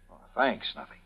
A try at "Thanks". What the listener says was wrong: Not thanks like you say it, pal. Thanks. See? Lay off the English accent. Speak American.